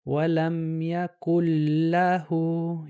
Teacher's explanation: The lam eats the noon. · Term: idgham